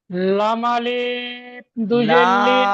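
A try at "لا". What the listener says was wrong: লাম আলিফ নয়, লাম দুজের লিন। জি না। লিন টান হয়ে যাচ্ছে। লাম দুজের লিন।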